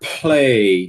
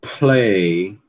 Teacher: vocês lembram que a gente já falou que p ele é aspirado quando tá em posição inicial, né? Ele continua aspirado mesmo se depois dele tiver um lã, certo?